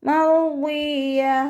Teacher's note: താ മർബൂത്തയിൽ നിർത്തുമ്പോൾ ഹ സുക്കൂനാക്കി കൊടുത്തിട്ട് നിർത്തുക.